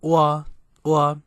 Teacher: it is a short monotone tone. So wa, wa, wa, just like that, just short and sweet. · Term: blank tone